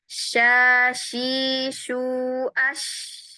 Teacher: Maka pada huruf syin suaranya mengalir bersama nafas. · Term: huruf shin